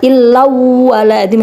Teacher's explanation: Karena ada tanwin bertemu dengan huruf wawu ya. Illau wala zimmah, jadi dimasukkan dengan cara mendengung. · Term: idgham bi gunnah